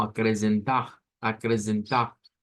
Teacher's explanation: Una forma de sacar esa R gutural es pensar en la J del español. Entonces la podemos pronunciar como acrecentar, acrecentar.